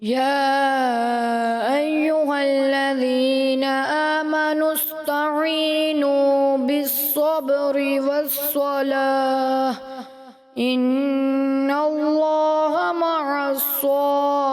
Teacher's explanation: سین کو آپ تھوڑا سا پر کی طرف لے کے گئے